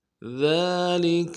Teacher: ذال کو نرمی سے ادا کرنا ہے، باریک ادا کرنا ہے، اور ذال کے اوپر کھڑا زبر ہے، اس کو ایک الف مقدار میں کھینچنا ہے۔